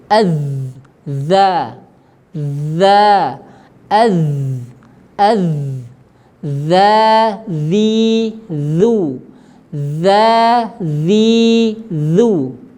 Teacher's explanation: huruf dalzal sifatnya juga tipis dia tidak tebal · tetapi ini huruf dzal sifatnya juga tipis, dia tidak tebal. Kalau ditebalkan, yaitu dengan mengangkat pangkal lidah, maka nanti akan jadi huruf dha.